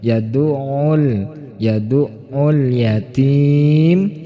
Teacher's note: hati-hati jangan sampai dipantulkan lamnya harus jelas tetapi juga tidak boleh memantul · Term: izhar Qomariyah